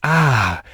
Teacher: normal ah which linguists call modal voice but also breathy voice